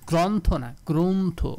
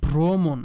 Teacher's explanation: রয়েছে র ফালা গ্র এইজন্য এটার উচ্চারণ গ্রন্থ না গ্রন্থ মানে স্বরে অ এর উচ্চারণটা হয়ে যাবে ও